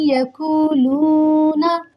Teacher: so you should have to read with full nasalization sound and you should have to follow the rules of idgham also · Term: idgham with gunna